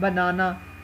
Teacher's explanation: अब आप जैसे देखें ये है बनाना, तो बनाना जो ना है बनाना हम लॉन्ग बोलते हैं सेकेंड सिलेबल को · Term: स्ट्रेस